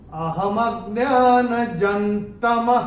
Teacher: ज के ऊपर अनुस्वार के बाद का अक्षर है त, और अनुस्वार के बाद जब त आएगा तो अनुस्वार का उच्चारण होगा न · विसर्ग चरण की समाप्ति पे आ रहा है, उसका उच्चारण केवल और केवल ह ही होगा